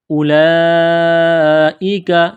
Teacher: الف کے اوپر پیش ہے تو اس کو حمزہ پڑھیں گے۔ اولئک، یہ لمبی مد ہے، 4 الف کے لمٹ میں کھینچنا ہے، کاف کو باریک کرنا ہے۔